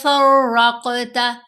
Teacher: ان تقول فرقت، فا کو را سے سٹرونگلی ملائیں گے، را مشدد ہے، اور را کے اوپر زبر ہے، را کو ہم نے موٹا پڑھنا ہے۔ را کے اوپر زبر ہو یا پیش ہو تو را کو موٹا پڑھتے ہیں، را کے نیچے زیر آئے تو پھر ہم نے اس کو باریک پڑھنا ہوتا ہے۔